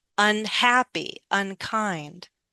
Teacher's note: And I'm not going to stress the un.